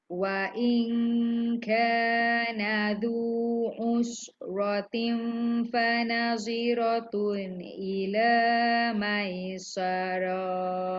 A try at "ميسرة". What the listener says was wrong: Maisarah. Pendek je.